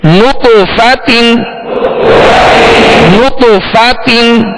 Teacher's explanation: نطفا تا دو زیر تین نطفاتن نطفاتن. نط کہیں گے تو ہونٹوں کو گول کریں گے کیونکہ نون پر پیش ہے. فا کی زبر پڑھتے ہوئے آواز اور منہ کھولیں گے، تا کی دو زیر پڑھتے ہوئے آواز کو گرائیں گے.